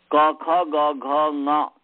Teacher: ये कंठ वर्ण है। यह कंठ से बोले जाते हैं। आप आगे प्रयत्न भी पढ़ेंगे तो आपको पता चलेगा कि क ख ग घ में क जो है अल्पप्राण है।